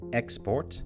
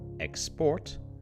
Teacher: if the emphasis is on the first syllable it's a noun if it's on the second it's a verb